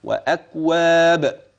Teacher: وأكواب، تلاحظ معي الحروف كلها ترقق، ولاحظ أننا وقفنا فأصبح مدا عارضا للسكون وهو جائز، ولا يخفى عليك أن الباء سكنت لأجل الوقف، فمعنا فيها القلقلة عمليا هكذا